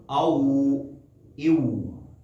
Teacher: ہونٹوں کو جب کلوز کرتے ہیں، گول کرتے ہیں تو واو ادا ہوتا ہے